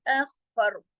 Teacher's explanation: Next word है अखफर, अखफर खा, double खा है यहाँ पर तशदीद की वजह से, अखफर, अखफर, अखफर, पहले अख और फिर खर, और दोनों मोटे पढ़े जाएंगे, खा भी और रा भी, अखफर, बाकी तमाम बारीक पढ़े जाएंगे।